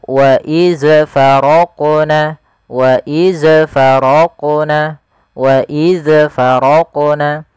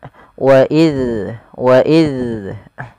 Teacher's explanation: Pada lafal bacaan wa idz faraqna, intabihu, hati-hati dalam melafalkan huruf zal yang dia berharakat sukun, jangan sampai ia terpantulkan